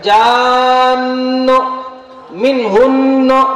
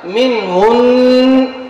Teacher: نون کا غنہ ظاہر کریں گے اور قلقلہ نہیں کیا جائے گا